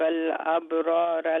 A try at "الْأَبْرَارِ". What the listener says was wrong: أبراري. You said أبرارا.